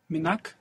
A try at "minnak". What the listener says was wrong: Also here with a double N, actually. The N doubles when we add on that ak.